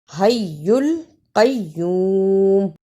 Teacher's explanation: الا شد کو بھی ادا کرنا اور لام کو بھی صحیح پڑھنا۔ حی القیوم، دونوں شد کو صحیح ادا کرنا اور قاف کو موٹا پڑھنا